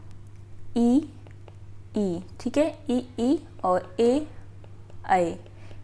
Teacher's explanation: अग्र स्वर में आपके आते हैं ई, ठीक है, ई और ए, ये हो जाते हैं आपके अग्र स्वर